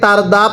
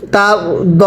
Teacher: র সাকিনের পূর্বে জবর হলে র সাকিনটা মোটা করে পড়তে হয়